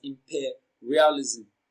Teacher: Now, imperialism is pronounced and broken down into syllables as imperialism. The second syllable, per, receives the stress. It is pronounced louder and longer.